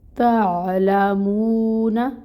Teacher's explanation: عین کو دیکھیں وسط حلق سے نکالنا ہے آپ نے